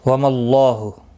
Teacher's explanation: اللہ کا لام زبر کی وجہ سے پر پڑھا جائے گا، اس کے اوپر کھڑی زبر بھی ہے، ایک الف کی مقدار کے برابر کھینچ کر پڑھیں گے، ہو کو کھینچنا نہیں۔